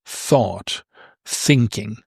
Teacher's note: When you say thought, thinking, these are not voiced. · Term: unvoiced